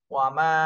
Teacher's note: মাতে তিন আলিফ টান দিতে হবে, উপরে চিকন চিহ্ন রয়েছে।